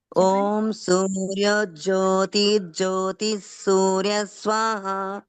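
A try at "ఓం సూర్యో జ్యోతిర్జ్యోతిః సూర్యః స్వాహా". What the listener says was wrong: మళ్ళీ మీరు జ్యోతి అంటున్నారు, ఇక్కడ సూర్యో జ్యోతిర్జ్యోతి సూర్య స్వాహ.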